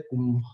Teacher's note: अनुस्वार के बाद भ है तो भ यानी प वर्ग का वर्ण है, उसका अनुनासिक आता है म